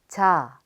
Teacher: Shaped like a pair of jeans, j is an affricate pronounced similarly to the j in jeans